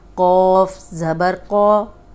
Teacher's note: یہ زبر کے ساتھ بھی موٹا ہی پڑھیں گے لیکن لمبا نہیں کریں گے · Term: موٹا قوف